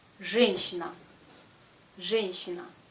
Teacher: Ici, la consonne J est dure, toujours. Et la lettre Y perd sa première partie, le son Y. Il se prononce E.